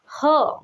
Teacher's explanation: कंठ से थोड़ा सा नीचे होता है ह का उच्चारण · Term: काकल व्यंजन